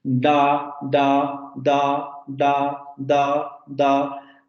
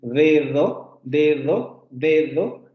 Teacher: Nuestra D de dedo, si ustedes pronuncian dedo, dedo, dedo, se van a dar cuenta que nuestra D se articula con la punta de la lengua hacia los dientes superiores